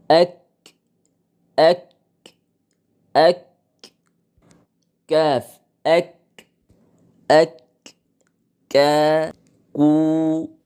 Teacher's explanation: হয়ে থাকে ষষ্ঠ নাম্বার মাখরাজ হলো সরাসরি জিহ্বার গোড়া নয় বরং জিহ্বার গোড়া থেকে একটু সামনের দিকে অগ্রসর হয়ে সোজা উপরের তালুর সাথে লাগিয়ে উচ্চারিত হয় কাফ এই কাফ কে বলা হয় কাফে কালেমা বা ছোট কাফ এক